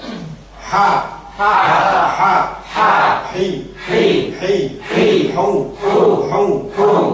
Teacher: Hak itu tanpa ada ngorok sama sekali.